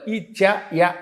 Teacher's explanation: అలాగే ఇచ్చు యశానాం తాలుహు తాలవ్యంతో పలకాలి ఇచ య అందుకే తాలువులు పనిచేస్తూ ఉంటాయి ఏదైతో కంఠాలు ఏ అన్నప్పుడు కంఠము